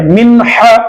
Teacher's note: یہاں پر نون ساکن کے بعد ہا آ رہا ہے تو نون کی آواز کو ظاہر کر کے پڑھیں